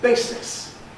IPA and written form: ˈbeɪsɪs (basis)